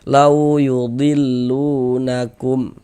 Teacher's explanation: Huruf waw sukun sebelumnya harokat fathah, maka huruf waw sukunnya adalah huruf lin kayak gitu. Maka kita baca lunak, lembut. Huruf waw tanda sukun tuh seperti ini.